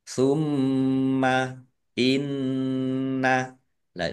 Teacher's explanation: Ini bacaan ghunah atau mendengung ya. dibaca mendengung dan ditahan biar tampak dengungannya. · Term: gunnah